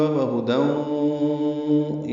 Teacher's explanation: وہدی، یہ ادغام ناقص ہے، غنہ ہوگا